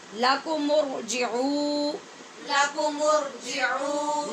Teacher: آواز عین کی لمبی کرنی ہے، مد کرنی ہے یہاں واو کی وجہ سے